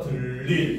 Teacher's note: 그래서 들일 같은 경우도 역시 먼저 니은이 첨가돼서 들릴이 되고 그 다음에 들의 받침인 리을의 영향을 받아서 초성인 니은이 리을로 유음화가 일어나서 들릴 이렇게 발음이 되는 겁니다